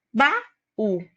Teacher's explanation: na palavra baú, nós temos duas vogais, o A e o U. Eles vão ficar em sílabas diferentes, formando assim um hiato. · O U, quando ele fica sozinho na sílaba, ele é a sílaba tônica, ele vai receber um acento. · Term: hiato tônico